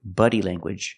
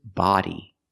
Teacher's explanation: use the open Sound ah like hot and stop